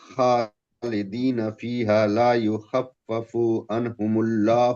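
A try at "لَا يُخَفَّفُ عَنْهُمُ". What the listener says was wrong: یخففو نہیں ہے، مد اصلی کر دیا آپ نے، لا یخففو مد اصلی کر دے رہے ہیں، لمبا کیجئے، لا یخففو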